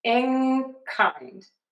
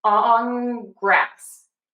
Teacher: So you can hear that the N no longer really sounds like a true N. It sounds like an NG. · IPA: /ŋ/